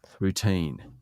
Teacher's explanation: Emphasis on the second syllable.